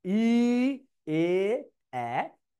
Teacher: ই, এ, এ, এটা হলো সম্মুখ বা প্রস্থিত, টান হয়েছে।